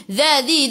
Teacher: hujung lidah keluar pada gigi depan